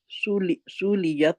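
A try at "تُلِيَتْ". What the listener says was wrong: नहीं, आप सा कह रहे हैं, ये ता है, ता, दो नुक्ते वाली।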